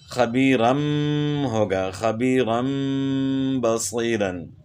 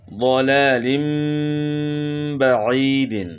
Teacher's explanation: یعنی خبیرن ہے، جو نون کی آواز آ رہی ہے بیچ میں، تو یہ نون کی آواز میم سے بدل جائے گی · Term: اقلاب